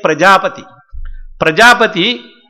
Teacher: pra is anudata, prajapati, pa is raised and ti is prachaya. So, it has got all the four swaras in this particular word prajapati.